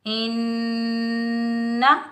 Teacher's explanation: ہم نون مشدد کے ساتھ ملائیں گے، بغیر کھینچے پڑھیں گے، نون مشدد حروف یرملون کے مجموعے میں سے آ رہا ہے تو یہاں ہم غنہ کریں گے